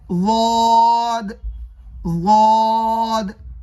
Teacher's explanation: ضاد کا مخرج زبان کی کروٹ اور اوپر کے داڑھوں کی جڑ، نیچے والے نہیں، اوپر والے داڑھوں کی جڑ، ضاد، ضاد۔